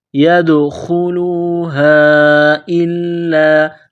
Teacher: ہے تو دال پر قلقلہ کریں گے، ان يدخلوها الا، چشمے والی گول ہا ہے، منہ سے ہوا نکالنے کی طرح پڑھیں گے ، يدخلوها الا، حمزہ کو لام کے ساتھ پلس کرنا ہے،